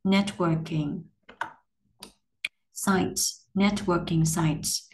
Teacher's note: W này giống như âm W của tiếng Việt, chu nhỏ miệng sau đó mở môi từ từ to ra một chút.